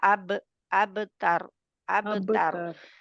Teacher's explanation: ता बारीक रखनी है, लेकिन रा के मखरज पर पहुंचते ही را کے لیے زبان کی جڑ پیچھے اٹھتی ہے پیچھے سے تو وہ موٹا ہوگا.